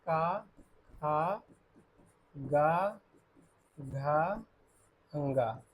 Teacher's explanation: घ वर्ण का उच्चारण स्थान कंठ है।